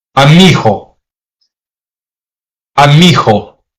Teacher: This is what you call a lenition. In casual or fluent speech, a hard G between vowels often softens into a softer G, almost fricative G, similar to the English sound in ghost, but weaker, sometimes like the Spanish soft D.